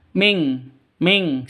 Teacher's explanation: nun mati bertemu dengan Kaf cara bacanya samar didengungkan siap-siap ke huruf kafnya non matinya ditambah dengan ng makanya bacanya Ming ya dengung ming